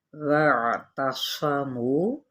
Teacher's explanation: واو کی زبر کو عین کے ساتھ ملانا ہے، وسط حلق سے ادا کریں، صوت حروف متعالیہ میں سے ہے، پر پڑھیں گے، صفیر بھی لازمی لے کر آنا ہے یعنی سیٹی، منہ پہ واو مدہ، بھی یہاں پہ یائے مدہ یعنی یائے مدہ کا قائم مقام ہے، ایک الف کے برابر کھینچیں گے۔